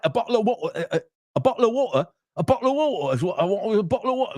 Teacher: could you try saying it without the weird glottal stops?